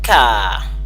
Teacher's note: You do not insert the r. The r is no longer there, so you have just the k sound and the long ah, the k and the long ah, and that makes car.